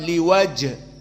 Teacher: Jim di sini sakinah, dia adalah qalqalah as-sugro, maka harus ada qalqalah.